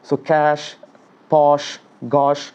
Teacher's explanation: So cash, posh, gosh, so the sound is coming from inside, the air is coming, and you need to put a blockage for it so that sh sound is coming. And mostly the middle of the tongue and to some extent the tip of the tongue is responsible for this particular sound